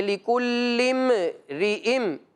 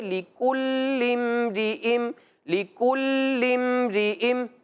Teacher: اور جب ہم لِكُلِّم اس لام کو میم کے ساتھ ملائیں گے تو کوشش کرنا ہے کہ میم کا جو ساکن ہے، جو سکون ہے، اس میں کوئی حرکت پیدا نہ ہو، جیسے اس طرح نہ پڑھا جائے کہ لِكُلِّم رِئِم، ایسے پڑھنے سے غلطی شمار کی جاتی ہے، لہٰذا اس سے بچنا ہے۔